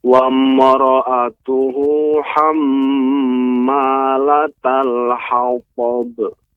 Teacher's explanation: yang bertasydid maka harus diberikan dengung dua ketukan